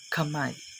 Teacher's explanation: Dumidiit sa vilar o malambot na bahagi na ngala-ngala ang ibabaw ng punong dila.